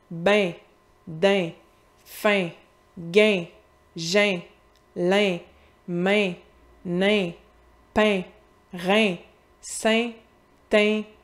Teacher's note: mon son « in », qui est un peu plus fermé au Québec